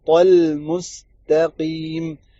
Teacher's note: طا کے آگے لام ہے، لام کو پتلا کریں گے